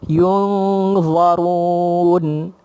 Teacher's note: Sebab mim mati jumpa dengan ya, izhar syafawi. Yung di situ dengung dan huruf za, maka lidah kita terapung di dalam mulut kita tu